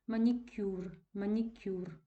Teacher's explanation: K у нас з вами напівпом'якшений і Роздільна вимова не відчувається